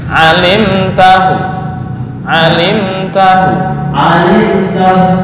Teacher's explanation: sekarang raum kurang sepertiga harakat